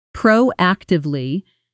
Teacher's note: Notice the stress falls clearly on the first syllable of proactively.